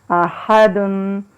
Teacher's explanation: ہا کی آواز حلق سے نکالنی ہے، تھوڑی سی ہوا کا پریشر اس میں ہو